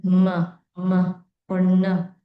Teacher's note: we produce these sounds using both the nasal cavity and the oral cavity